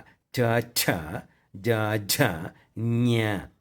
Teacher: ನಾಲಿಗೆ ಅಲ್ಲೇ ಟಚ್ ಆಗಿರಬೇಕು ಆ 5 ಅಕ್ಷರಗಳನ್ನು ಹೇಳುವಾಗ. ತಾಲವ್ಯದಲ್ಲಿ ಬಂದಾಗ ಚ ಛ ಜ ಝ ಞ, ನಾಲಿಗೆ ಮೇಲಕ್ಕೆ ಹೋಯಿತು